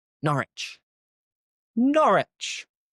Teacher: So once again we forget the W.